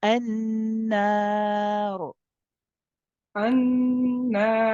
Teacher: So then we go to the letter before, which is the noon, which carries a fatha. And because of the fatha, we make the ra heavy.